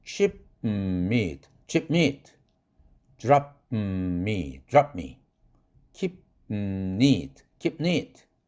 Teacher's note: 입으로는 개방되지 않고 orally unreleased고요. 코로 개방돼서 새나가는 nasally released 돼서 비음화가 생기는 거예요. nasalization이라고 그러죠.